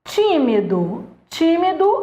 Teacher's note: tímido é um caso em que você tem uma proparoxítona